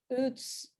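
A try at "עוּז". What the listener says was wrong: Okay, now it's not a tzadi, that's a zion. So give me a z, uz, It rhymes with booze, uz.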